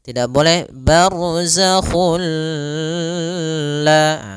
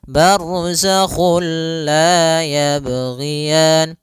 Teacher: Sehingga langsung masuk barzakhulla dan dia bila ghunah berarti tidak boleh disertai dengan ghunah. Tidak boleh ada penahanan. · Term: idgham bilaguna